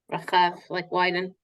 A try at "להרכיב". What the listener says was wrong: No. It's with a kaf, not a chet.